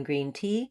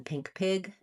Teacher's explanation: So main error to watch out for is between the E, as in green tea, and the I, as in pink pig, tense and lax, but both high front vowels